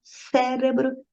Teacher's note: Você já está vendo que não é a última sílaba que é a mais forte, é a antepenúltima